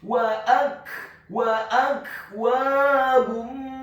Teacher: Wa akwabum, huruf waw-nya dibaca fathah 1 harokat, huruf alifnya dibaca tipis fathah 1 harokat, huruf kafnya dibaca sukun, dan seperti ada pantulan tipis